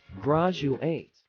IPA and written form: ˈɡrædʒuˌeɪt (graduate)